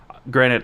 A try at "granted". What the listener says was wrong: you said granite.